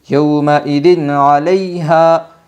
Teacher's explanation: اظہار حلقی ہوگا 2 زیر تنوین کے بعد حرف حلقی کے 6 حرفوں میں سے عین آئی ہے، اس لیے 2 زیر تنوین کی آواز کو خوب ظاہر کر کے پڑھے گی